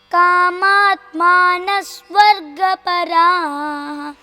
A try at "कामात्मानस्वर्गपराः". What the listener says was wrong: Where is that s? Once again, make sure that you are pronouncing that s also. Because kamatmanah swargaparaha becomes kamatmanaswargaparaha.